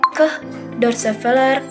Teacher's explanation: Lalu yang kedua itu adalah konsonan ke, dorsovelar hambat tak bersuara. Dihasilkan dengan menghambat aliran oleh pangkal lidah dorsovelar, lalu melepaskannya secara tiba-tiba, hambat letup, dan dilakukan tanpa getaran pita suara.